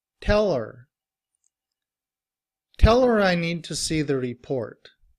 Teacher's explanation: when we are reducing her, we don't pronounce the H and we just say and when it's combined with tell, we say tell her.